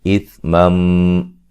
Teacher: اثمم نون تنوین کا ادغام مع الغنہ ہے